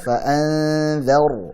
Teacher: Dhar, roknya tebalkan ya